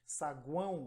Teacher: o ar sai pelo nariz